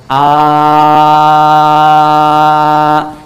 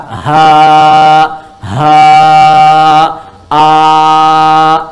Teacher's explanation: Paling gampangnya Anda mengucapkan A, tidak ada sekat, udara mengalir saja, mengalir. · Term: hamzah